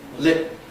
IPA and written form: lɪt̚ (lit)